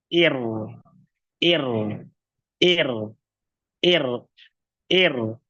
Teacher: kalau huruf ro tipis tengahnya turun pangkalnya turun